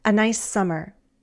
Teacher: Nice ends with S, and summer starts with S. A nice summer. We say it as one long S.